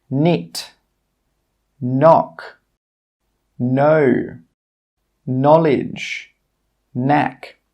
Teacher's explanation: In all of these words, we're not pronouncing the K sound.